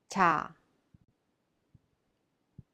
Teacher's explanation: Cha is in between soft CH and J, but is not voiced, cha. Cha is aspirated, cha.